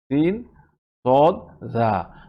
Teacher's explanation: জিহ্বার আগা নিচের দাঁতের মাথার সাথে লাগিয়ে আমরা তিনটি অক্ষর উচ্চারণ করি,